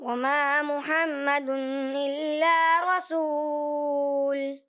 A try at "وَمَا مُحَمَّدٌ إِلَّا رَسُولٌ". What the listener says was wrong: جی وما محمد الا رسول، تو کیا ہے یہاں محمد غنہ بھی کرنا ہے آپ نے، تو یہاں غنہ کمزور ہو گیا اور دن پہ ایسا محسوس ہو رہا تھوڑا زیادہ کر لیا، تو جہاں اظہار ہلکی ہے وہاں غنہ نہیں ہونا چاہیے۔ اور وما محمد، اچھا کلیئر کریں تھوڑا، نہ کہ وما